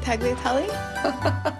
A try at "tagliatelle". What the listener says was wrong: The G is silent. The G is silent G.